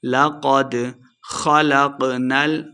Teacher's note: خ اور قاف دونوں کو موٹا پڑھا جائے گا